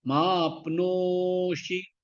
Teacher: நோ நடுவில் எடுத்து இழுத்து சொல்லணும். ஷி ஷார்ட் ஆயிடும்.